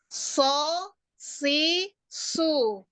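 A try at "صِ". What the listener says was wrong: Tebalkan yang kasrah. Tebalkan kasrahnya juga. Si, su. Ya, naik semua ya, lidahnya naik. Pangkal sampai permukaan. Tebal, kasrah tebal.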